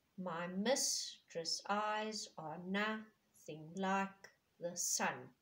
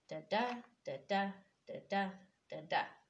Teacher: unstressed stressed each line five sets of the unstressed and stressed syllable